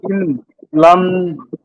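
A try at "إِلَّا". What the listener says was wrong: লাম আলিফ জবর লা, এখানে লাম আলিফ জবর লা টান দিয়েছিলাম, এখানেও লাম আলিফ জবর লা টান দিতে হবে।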